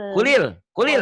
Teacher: Jadi kulil kulil, jangan kul, L-nya jangan dibaca sukun, tapi dibaca kasrah.